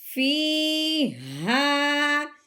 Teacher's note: یہ موٹی ہا ہے، اس کی حلق کے گہرائی سے آواز نکالنی ہے موٹی کر کے